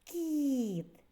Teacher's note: звук і пом'якшує попередній приголосний